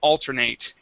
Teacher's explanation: if you're using it as a verb um it would be to alternate and that's when we would pronounce eight